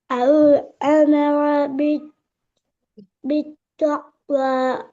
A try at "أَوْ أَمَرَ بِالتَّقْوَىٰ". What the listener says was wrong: தக்குவாண்டு வராது நான் என்ன சொன்னேன் இந்த காஃப் எப்படி ஓத சொன்னேன் கலக்கு படுது இல்லையோ வாயில ஆ